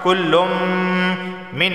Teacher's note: تنوین کے بعد میم حروف یرملون کا آیا ہے تو ادغام اور غنہ دونوں ہوں گے، یعنی ادغام بھی ہوگا غنہ بھی ہوگا۔